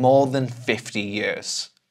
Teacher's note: This last part, 'than 50 years'. Actually, I'm not saying 'than', I'm saying /ðən/.